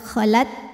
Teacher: huruf ta ini dari segi suara sifatnya syiddah kuat, khalat. Tapi dari segi angin dipermudah, keluar angin, hams, khalat.